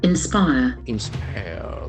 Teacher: Inspire, the accent for second syllable.